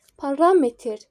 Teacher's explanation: Parametr ikinci hecaya düşür.